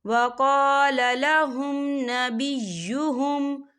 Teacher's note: وقال لهم نبیہم، یہ دیکھیں وقال لهم، یہاں میم ساکن ہے اور میم ساکن کے بعد نون آ رہا ہے، تو یہاں پر اظہار شفوی ہو رہا ہے، تو ہم یہاں غنہ نہیں کریں گے، ہم اسے جلدی سے پڑھیں گے۔